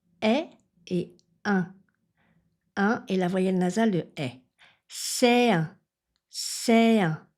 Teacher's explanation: Ici, je ne fais pas de liaison. Je fais ce qu'on appelle un enchaînement vocalique. J'enchaîne deux sons de voyelles.